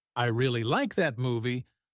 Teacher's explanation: in the sentence, I really like that movie, the word really is stressed because it's important